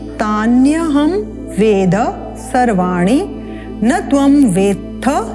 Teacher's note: त थ दोनों एक साथ हैं, अल्प प्राण महाप्राण